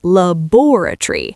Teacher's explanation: We say laboratory. We completely drop the O before the R and we drop the O before the Y. We compress five written syllables into four spoken ones.